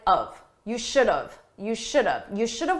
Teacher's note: in spoken English we take have, which is the grammatically correct choice, but we reduce it, we say it quickly